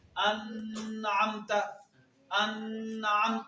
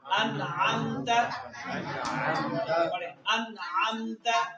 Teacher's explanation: جب اس نون ساکن کو پڑھیں گے آواز تو ناک میں جائے گی پر دیر نہیں لگائیں گے